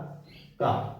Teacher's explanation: इसमें हा की हकार नहीं है, तो ये अल्प प्राण है।